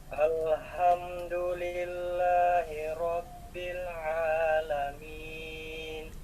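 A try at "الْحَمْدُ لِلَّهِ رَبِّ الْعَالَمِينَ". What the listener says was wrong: Oke, perhatikan lamnya. Hati-hati jangan sampai terseret, terkesan kol-kolah. Ya, hati-hati alham ya, itu yang saya maksud.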